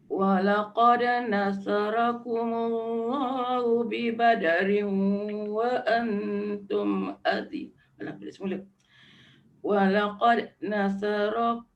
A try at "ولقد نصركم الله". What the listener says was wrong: dal tu dia jangan macam terhimpit. Walaqad. Jangan cepat. Walaqad nasara. Soro. nasarakumullah.